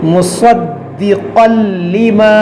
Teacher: صاد حروف مستعلیہ ہے اور اس کو موٹا کریں گے. دال حروف قلقلہ ہے اور مشدد ہے، اس کو خوب جماؤ کے ساتھ پڑھیں گے.